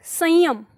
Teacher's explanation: इसका उच्चारण जो है वो केवल नाक से होता है कंठ से निकलकर केवल नाक में जाता है · संयम एकदम से कंठ से निकल के नाक में जाता है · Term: अनुस्वार